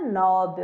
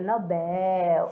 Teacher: Oxítona, a sílaba mais forte, é a última.